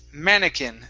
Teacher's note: stress is at the very beginning of the word mannequin